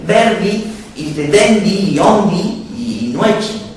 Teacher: El cerramiento de las vocales finales